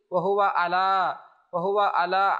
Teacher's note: আইনকে হামজা পড়া যাবে না